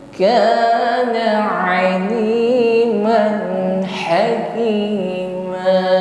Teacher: huruf ain lunak saja keluar dari wasatul halqi, tenggorokan tengah